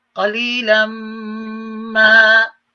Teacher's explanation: And in right at the end, قليلا, tanween double fatha, double zabar, but a meme comes after it. قليلا ما, meme after it is idgham as well as ghunna being applied within idgham.